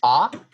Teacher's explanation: it's not a front vowel nor is it a back vowel right we would say it's in the middle of front and back · it's minus front and minus back for height it is minus high and plus low and in my dialect it's unrounded i think most would be unrounded so i think that might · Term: central